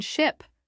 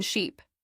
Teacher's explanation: the short I in ship versus the long E in sheep